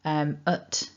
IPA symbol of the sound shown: ə